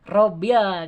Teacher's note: Jadi alif lam terdengar jelas lamnya, itu alif lam Komariah tuh. Robil kan, ada lam kedengaran.